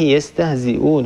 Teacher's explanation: هنا مد بدل، ومد البدل عندنا فيه لورش القصر والتوسط والطول